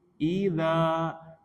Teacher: Ghasikin, idza, za mad tabi'i karena fathah ya, za berharokat fathah ketemu alif, maka dibaca dua harokat.